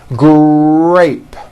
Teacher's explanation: in the word grape, the R sound is stronger and you even hear it more than the G sound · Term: R blends